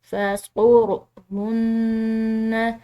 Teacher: نون مشدد ہے، مشدد نون پر غنہ کریں گے